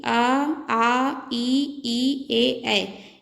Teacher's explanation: आवृत्तमुखी आ, ई, ए। इसमें होठों का आकार गोलाकार नहीं होता है।